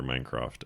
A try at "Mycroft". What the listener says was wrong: You just said Minecraft. Like Minecraft. Well, it's Mycroft. Yeah, Mycroft. Yeah, they sound almost the same.